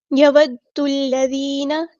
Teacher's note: دال ہمارا تشدید والا ہے تو ہم نے اس کو ایک بار ساکن کر کے ایک بار اس کی حرکت کے مطابق پڑھنا ہے